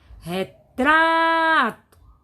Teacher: Sílaba tônica é o tra. Então, é a penúltima.